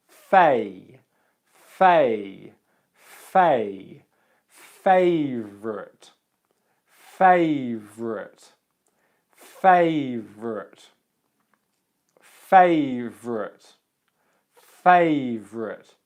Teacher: the A diphthong is at the first part of the word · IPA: /eɪ/